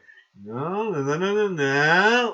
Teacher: then at the end of the sentence you stop you pause your tone goes down some people overdo it that's called vocal fry